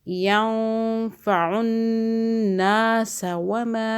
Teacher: نون مشدد پہ گنہ کیا 2 سیکنڈ کا